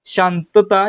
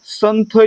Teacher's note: जर त आला असेल तर अनुस्वाराचा उच्चार आहे तो त्याच्याच गटातील अनुनासिकासारखा म्हणजेच न सारखा होतो